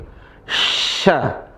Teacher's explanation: Tengah lisan ketemu langit-langit. Tengah lisan ini tengah lisan ketemu langit-langit. · Adapun sya, tengah lisan ketemu langit-langit.